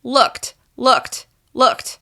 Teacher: There's no vibration happening from the k to the t sound.